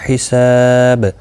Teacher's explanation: سا الف مدہ ہے، ایک الف کی مقدار کے برابر کھینچ کر پڑھا جائے گا اور وقف کی صورت میں با ساکن پڑھا جائے گا، وقف بال اسکان ہوگا.